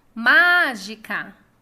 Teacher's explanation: Ma é a sílaba tônica. E é a antepenúltima, então é uma proparoxítona